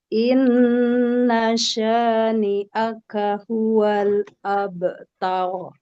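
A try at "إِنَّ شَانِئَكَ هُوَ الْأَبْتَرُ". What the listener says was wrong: Abtar. Langsung jangan jeda, Bu. Inna syani'aka huwal abtar. Abtar.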